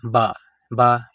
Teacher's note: با کو ہم ایک الف کے برابر لمبا کریں گے